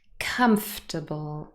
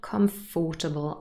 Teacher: These 2 words have 3 syllables and they're stressed on the first syllable.